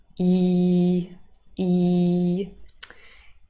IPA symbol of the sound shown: i: